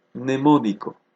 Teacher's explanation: se impone fonológicamente la N, y la M pierde, se desvanece el sonido de la M.